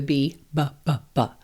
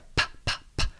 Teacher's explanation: So this is where the early sounds like p, p, p, the P, or the B, b, b, b, which is the same motor movement. It's just one's voiced and one's voiceless.